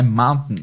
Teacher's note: essa parada glotal aí principalmente depois do N, fica muito engasgado, né? Mountain. Fica bem na garganta, fica bem na garganta, mountain.